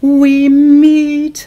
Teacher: we is lighter and then meet is stronger because of that nasalization there.